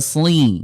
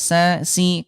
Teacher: huruf sodnya dia tetap tebal walaupun dia kasrah ya, sli gitu ya, sli diangkat pangkal lidahnya ya, beda sama sin ya.